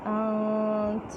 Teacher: یہاں پہ نون پہ اکفا کریں گے تا ساکن ہو جائے گا